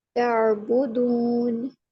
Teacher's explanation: वाव साकिन से पहले पेश है, इसको हम वाव मद्दा कहेंगे और 2 काउंट स्ट्रेच करेंगे